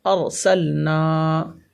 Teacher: یہاں الف مدہ ہوگا میری بہن، دیکھیے گا الف مدہ، الف سے پہلے زبر ہے، الف مدہ ہوگا. الف مدہ کو ایک الف کے برابر کھینچ کر پڑھتے ہیں